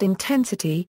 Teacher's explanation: For example, in the word intensity, the vowel represented by the letter E is stressed, so it is longer and pronounced with a higher pitch and intensity than the other vowels